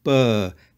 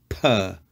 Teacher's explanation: when Greeks are speaking they make it more like a b sound it's softer it's a burr it's not a per but a burr the · The letter P, some people call it pi, is equivalent to the English letter P. However, when Greeks are speaking, they make it more like a B sound. It's softer.